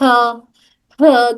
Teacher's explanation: जब हमजा और ह हमारे हलक के निचले हिस्से से अदा होते हैं तब उनको अदा करते वक्त में एक गर्म सी हवा आती है